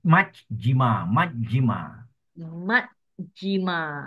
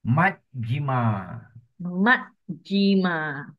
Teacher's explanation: Short pause at double J and a short I.